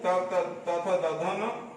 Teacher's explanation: इसका उच्चारण स्थान दंत होता है